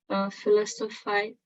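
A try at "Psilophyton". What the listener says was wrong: Xylophyton. The P is silent here, okay? Xylophyton.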